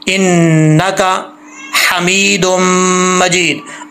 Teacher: इन नका नून के ऊपर शद्द है, गुना करेंगे